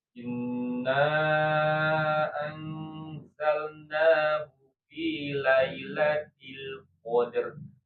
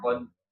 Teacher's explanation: tetap harus dibunyikan huruf terakhirnya, jangan malah berhenti di huruf dalnya saja ya. Jadi tetap harus ada, kalau berhentinya di dal berarti menghilangkan satu huruf ya, berarti bisa nanti mengubah makna dari ayat tersebut ya.